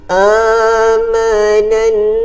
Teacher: Amanan, kita dengung di sini. Okey, di sini kita dengung kerana ada nun bersabdu